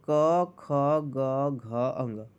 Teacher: कंठ से ध्वनियां उत्पन्न हो रही हैं